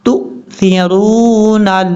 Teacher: حمزہ ہی پڑھا جائے گا جھٹکے کے ساتھ کیونکہ حمزہ کے اوپر جزم ہے. جب حمزہ کے اوپر جزم ہو تو حمزہ جھٹکے کے ساتھ پڑھا جاتا ہے.